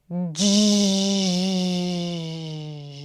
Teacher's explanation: you take the voiced stop sound, d, and then you release it gradually to the fricative, j. This is the voiced, okay? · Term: j sound